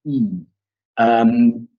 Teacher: It's what we call the high rounded front vowel.